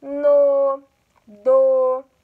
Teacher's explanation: E aí, eu pronunciando, eu vou tirar essa dúvida. Então, essas monossílabas átonas, que tem um sonzinho mais fechado, sonzinho mais leve